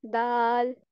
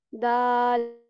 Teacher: हम अपनी जुबान की टिप को सामने वाले ऊपर के जो 2 दांत हैं उनकी जड़ से लगाते हैं, तो क्या प्रोनाउंस होता है, दाल।